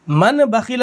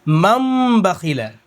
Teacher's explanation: لیکن ہم ماں نہیں پڑھیں گے، اس نون کو میم پڑھیں گے، تو من کے بجائے مم ہو جائے گا